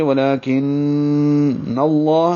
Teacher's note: لام اسم جلالہ کو پر پڑھیں گے کیونکہ پیچھے نون پر زبر ہے، ولیکن اللہ، ہا پر زبر ہے، ذو واو مدہ ہے، 2 حرکات لمبا ہوگا، گھونٹوں کو گول کریں گے.